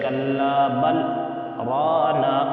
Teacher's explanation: تو یہاں بھی دیکھیے بل رانا پر سکتہ آیا ہے، تو بل پر ہم آواز روک دیں گے اور سانس کو جاری رکھیں گے